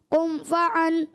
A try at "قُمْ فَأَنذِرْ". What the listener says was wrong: قم فأن. عین کی آواز نہیں ہے. قم فأن. عین نہیں ہونا. قم فأن. قم فأنذر. اچھا بعض بچے کرتے ہیں بچے کیا بڑے بھی بعض حمزہ کو عین بنا دیتے ہیں عین کو حمزہ بنا دیتے ہیں. تو یہ نہیں ہونا چاہیے.